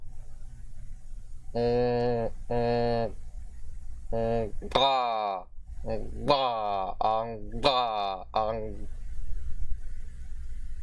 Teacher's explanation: The pre-nasalized voiced labial velar plosive consonant.